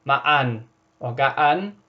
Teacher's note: Note that the H here is like a glottal stop.